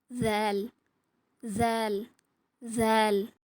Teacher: நாக்கு நுனியால மேற்பருக்களோட விளிம்பில் அதாவது மேல் பருக்களோட எண்டு இருக்குல்ல அதை தொட்டு கொஞ்சம் வலுவான சவுண்ட் கொடுத்து சொல்லணும்